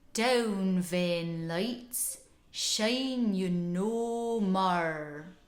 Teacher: We get the PRICE vowel, I, and the MOUTH vowel, O, and the Rhotic R.